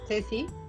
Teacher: So I pronounce it TH because I'm from Spain